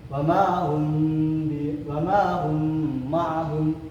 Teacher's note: dengan menyatukan huruf mim, kedua huruf mim dengan mendengung. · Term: idgham mimi